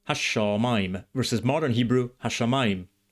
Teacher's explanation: has a doubled consonant after the definite article ha